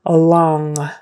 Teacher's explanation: the NG on the end is when your tongue goes back and just kind of holds there